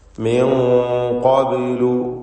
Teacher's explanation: സാക്കിനത്തായ നൂനും ശേഷം ഖാഫും ഇഖ്ഫാ ഹഖീഖി നൽകി മറച്ചു മണിച്ചുകൊണ്ട് ഉച്ചരിക്കണം. മണിക്കലിൽ തഫ്ഖീം വേണം.